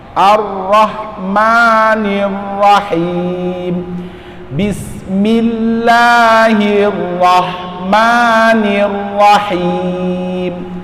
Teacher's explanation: di huruf ro ini salah satu sifatnya adalah at-tikrar, nah, tapi jangan kebanyakan